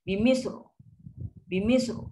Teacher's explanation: sifat ra getaran dia sekali getaran saja. Bukan macam banyak kali.